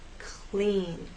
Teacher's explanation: when L follows P or K, it actually begins voiceless.